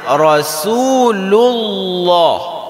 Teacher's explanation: lafaz Allah di sini dibaca tebal